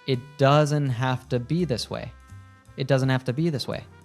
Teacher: have and to link together and sound like have to.